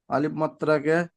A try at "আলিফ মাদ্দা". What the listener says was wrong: মাদ্রা, মাদ্রা নয়, মাদ্দা, মাদ্দা।